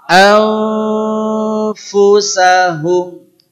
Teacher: Jadi begitu suara akan selesai, f-nya sudah langsung karena posisi makhrajnya sudah di bibir.